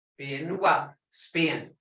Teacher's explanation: Creek B is unaspirated. Saying without the puff of air that English speakers add at the beginnings of stressed syllables. It therefore sounds to English speakers as though it were halfway between B, a P and a B.